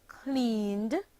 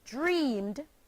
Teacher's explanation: the ed ending of voiced sounds takes on a d sound when placed at the end of verbs